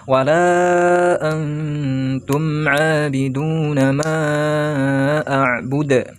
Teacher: Ikhfa hakiki ya. Dibacanya agak samar ya.